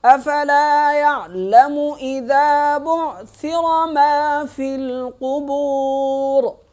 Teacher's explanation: را موٹی ہو گئی وقف کی صورت میں